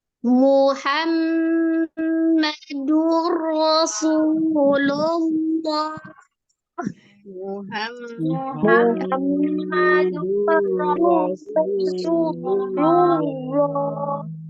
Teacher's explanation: tetap ditasdid ke huruf ro tapi tidak disertai dengan gunna huruf rnya hanya ditawasutkan saja mengalir sebagian durro gitu ya kemudian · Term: Idam bila gunah